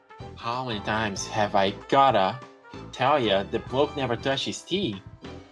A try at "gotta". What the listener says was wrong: That's the most American thing you could have done. You just pronounced 2 D's in there instead.